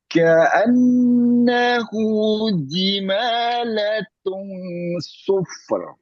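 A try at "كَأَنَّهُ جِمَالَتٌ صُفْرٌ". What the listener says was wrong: Gunahnya yang kurang. 3 ketuknya yang kurang.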